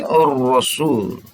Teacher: alif lam ini tidak terbaca, langsung dilebur bacanya kepada huruf samsiahnya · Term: alif lam syamsiah